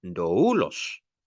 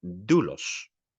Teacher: Nunca se pone sobre la primera, y se pronuncia como si estuviera sobre la primera, es decir, el diptongo se pronuncia como una sola sílaba y allí, sobre esa única sílaba, va el acento